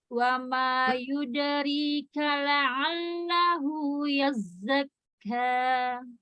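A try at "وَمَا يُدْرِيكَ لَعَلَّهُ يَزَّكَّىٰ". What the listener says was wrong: Yazzak. Nah, zak itu berarti sifat fathahnya belum ada infitahnya itu. Dipisah langit-langit, lidahnya dengan langit-langit. Yazza, buka za, pisah lidahnya dan langit-langit. Za. Za. Dalamnya pisahkan. Za.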